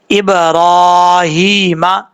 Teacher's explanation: ایک الف کی مقدار لمبا کر کے پڑھیں گے، ہا کے نیچے کھڑی زیر ہے، یہاں پر بھی ایک الف کی مقدار اس کو لمبا کر کے پڑھیں گے